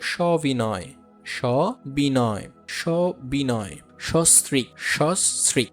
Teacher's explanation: অর্থাৎ আদ্য দন্ত স এর পরে যদি হ্রস্ব ইকার, দীর্ঘ ইকার, হ্রস্ব উকার, দীর্ঘ উকার এইগুলো যদি থাকুক না কেন, সহার্থের দন্ত স এর উচ্চারণ অকারান্তেই হবে, ওকারান্ত হবে না